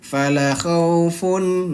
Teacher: ada fathah bertemu dengan alif, maka dia dibaca panjang 2 harokat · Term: mad tabi'i